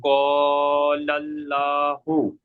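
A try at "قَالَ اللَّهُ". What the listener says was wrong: লা নয়, ল। এখানে আল্লাহ শব্দের ইজরাটা করেন। পুর করে পড়তে হবে। পুর। পুর পুর মানে কেমন ভাবে পড়তে হবে? মুখটাকে গোল করে, অর্থাৎ ল পড়তে হবে, ল।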